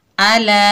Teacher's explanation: इजरा किस तरह होता है, देखिए, हमज़ा के ऊपर ज़बर बगैर खींचे पढ़ेंगे आ, लाम के ऊपर ज़बर लेकिन आगे अलिफ खाली, ये अलिफ मद्दा है, इसके ऊपर मद है तो यहाँ मद बनेगी मद्दे मुनफसिल, जिसको 3 अलिफ की मिकदार खींचकर पढ़ेंगे